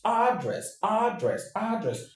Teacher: But in the American English, the stress is on the first syllable